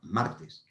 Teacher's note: La sílaba tónica está en la penúltima sílaba, martes. Así que el plural de martes no cambia, sigue siendo martes. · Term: llana